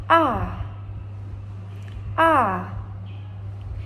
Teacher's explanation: You can pronounce a by open your mouth wide. The tongue is low and toward the front.